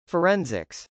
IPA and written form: fɚˈɛnsɪks (forensics)